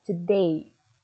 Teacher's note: Day-nya lebih clearly, lebih jelas dibandingkan to-nya. Itulah penekanan kata.